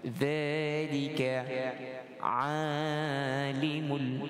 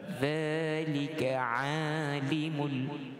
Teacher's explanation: Kalau makhraj tuan-tuan, dia keluar di hujung lidah, di bawah gigi hadapan. Dia di dalam kategori lisan yang di hujung. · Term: huruf zal